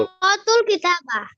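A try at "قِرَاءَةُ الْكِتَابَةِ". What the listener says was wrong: না করাতু, ইকরা না, করাতুল কিতাবা।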